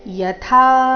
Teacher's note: ಯಥಾ ಥ ಮಹಾಪ್ರಾಣ ದೀರ್ಘ